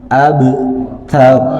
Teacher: taknya juga ada desisan sedikit karena tak punya sifat hamas